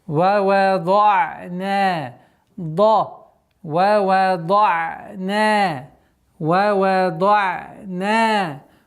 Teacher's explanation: Звук вау не является твердым, и поэтому нужно быть обращать внимание, чтобы она была ва. Дат твердый, и остановка на айн должно быть неким скользящим звуком.